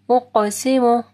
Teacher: قاف کو موٹا پڑھنا ہے اور قاف کے اوپر جو ہے قلقلہ ہوگا